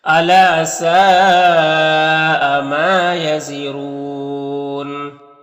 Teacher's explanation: سین میں جو مد ہے یہ مد متصل ہے، کیونکہ حرف مد الف کے بعد حمزہ اسی کلمہ میں ہے